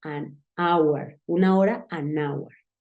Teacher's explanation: Pero con estas palabras H, que te digo que son mudas, es usual usarlas como si fuese una vocal, porque la H desaparece